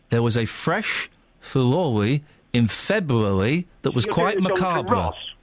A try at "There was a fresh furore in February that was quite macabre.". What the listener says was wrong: You're doing a Jonathan Ross, which is an imitation of the Andalusian lisp.